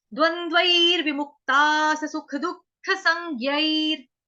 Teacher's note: विसर्ग का उच्चारण होगा र से